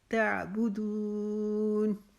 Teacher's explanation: بو کو لمبا نہیں کریں گے، دون کو ہم لمبا کریں گے۔ تعبدون، ولا کو ہم 4 الف لمبا کھینچیں گے۔